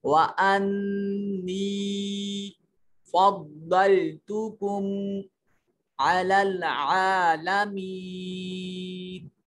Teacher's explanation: انی میں دیکھیے یا ساکن ہے, ماقبل مقصور ہے اور نون کے اوپر شد ہے, لہذا نون پر غنہ کریں گے اور یا کو یا جو ہے حرف مدہ ہے, اس کو لمبا کریں گے.